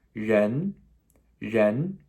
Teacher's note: Now this has a second tone, the first second tone we've seen in today's video, okay? That rising questionable what?